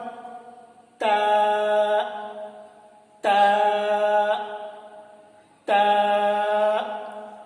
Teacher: जुबान को ऊपर के दांतों की जड़ में मिलाएंगे, ऊपर के तालू में भी लगाएंगे, और ऊपर के दांतों की जड़ में भी लगाएंगे जुबान को